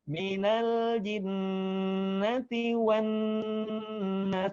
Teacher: Jadi gunahkan, tahan di rongga hidung, 2 ketukan, ya. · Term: gunnah